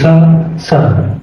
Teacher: ये दंत सकार है मित्रों, दांत से जीभ लगती है